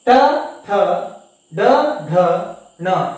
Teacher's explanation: ಇವುಗಳನ್ನ ಹೇಳ್ಬೇಕಾದ್ರೆ ನಾವು ನಾಲಿಗೆಯನ್ನ ಹಿಂದೆ ಚಾಚಿ ಬಾಯಿಯ ಮೇಲ್ಭಾಗಕ್ಕೆ ಸ್ಪರ್ಶಿಸಿದಾಗ ಈ ಒಂದು ಅಕ್ಷರಗಳು ಉಚ್ಚಾರ ಆಗುತ್ತೆ ಅಥವಾ ಉತ್ಪತ್ತಿ ಆಗುತ್ತೆ. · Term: ಮೂರ್ಧನ್ಯ ಅಕ್ಷರಗಳು